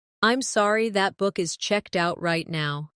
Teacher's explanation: Stress checked out to make it clear.